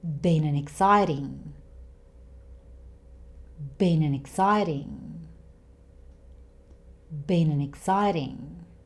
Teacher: And an, this small word, changes to n. And the t sound in exciting, again, it sounds like it's between a D and a T. So this becomes one long word. · We have consonant and vowel sounds next to each other again here. And an, this small word, changes to n. And the t sound in exciting, again, it sounds like it's between a D and a T.